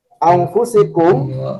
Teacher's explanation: mim sukun dibaca jelas dan tidak didengungkan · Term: izhar safawi